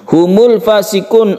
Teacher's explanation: fasikun un-nya ini adalah Mad Arid lissukun yang boleh panjang 1 2 atau 3 Alif